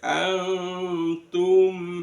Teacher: Kemudian antum nun sukun bertemu dengan ta dibaca ikhfa. Kemudian antum mim sukun bertemu dengan alif itu bacaan izhar syafawi. Izhar itu jelas syafawi di bibir.